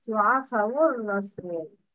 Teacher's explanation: Alif wasl isn't pronounced. Lam shamsiya isn't pronounced.